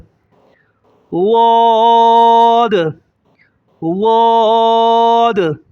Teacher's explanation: ایک الف سے زیادہ کھینچیں گے اور اپنی زبان کو اوپر کی داڑوں میں لگائیں گے